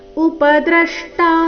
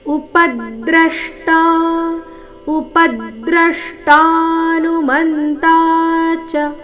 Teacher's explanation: ಪ ಮತ್ತೆ ದ್ರ ಎರಡು ಅಕ್ಷರಗಳ ಮೇಲೆ ಆಘಾತ ಬರಬೇಕು